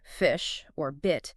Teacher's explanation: the I sound in words like fish or bit is often pronounced a bit higher in the mouth so it might sound closer to the e in feet to